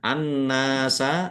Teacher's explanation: alif lam syamsiyah karena tidak dibaca langsung masuk ke huruf berikutnya yaitu itu nun ditandai nunnya ada tasdidnya.